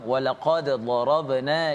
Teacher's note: Ya, kalau kita lihat huruf dal ini bila mati, bila sukun, kita perlu bacanya dengan qalqalah. Ada letupan pada huruf dal yang mati